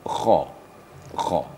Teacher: Jadi kha ini ada getaran apabila kita membacanya.